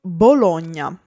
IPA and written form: boˈloɲɲa (Bologna)